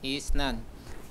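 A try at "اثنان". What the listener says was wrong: Yang isnan. Jangan dipanjangkan i-nya. Isnan.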